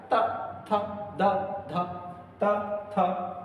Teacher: जिह्वा जो है वो दांत की जड़ में लगेगी। कहाँ लगेगी, दांत में, इसलिए इनका उच्चारण स्थान दंत्य माना गया है। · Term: दंत्य वर्ण